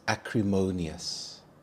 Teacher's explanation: The stress is on the third syllable mo